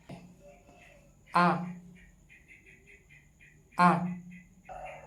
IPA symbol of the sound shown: ʌ